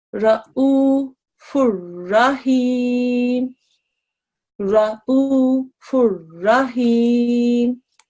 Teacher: if a lam or ra mushaddad appear after nun sakin or tanween, no nasal sound will be assimilated into the next letter. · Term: idgham kamil